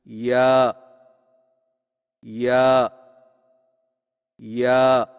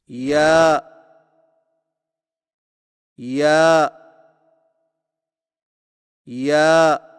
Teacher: یا کی ادائیگی میں زبان کے درمیان کو تالو کی طرف بلند کرتے ہوئے باریک آواز میں پڑھیں